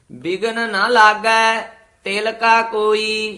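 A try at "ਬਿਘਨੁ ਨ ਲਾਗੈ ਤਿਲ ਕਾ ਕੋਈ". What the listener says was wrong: ਤਿਲਕਾ ਇਕੱਠਾ ਨਹੀਂ ਕਹਿਣਾ।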